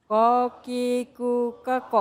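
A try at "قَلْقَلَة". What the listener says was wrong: Masih pakai huruf kaf, ya. Masih pakai huruf kaf.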